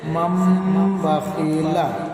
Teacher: تنوین یا نون ساکن کے بعد با آئے تو نون کو میم سے بدل کر غنہ اور اخفا کے ساتھ پڑھیں گے. اس کو اقلاب کہتے ہیں.